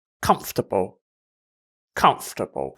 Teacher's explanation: just skip the ore sound and you have comfortable